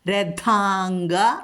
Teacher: അനുസ്വാരത്തിനു ശേഷം കവർഗോൺ വന്നിരിക്കുന്നത് അതുകൊണ്ട് വർഗ്ഗത്തിലെ അനുനാസികായ ങ്ങ ചൊല്ല അനുസ്വാരം അവിടെ ലോപിക്കും അവിടെ ങ്ങ ചൊല്ല രഥാംഗ അവിടെ ഗ മൃദുവാണ് രഥാംഗ